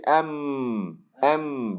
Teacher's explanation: ایم vibration آپ کو بالکل محسوس ہوگی آپ کے ناک کے اندر